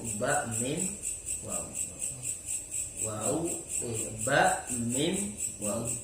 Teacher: Antara bibir atas dengan bibir bawah, yaitu ba, mim, waw.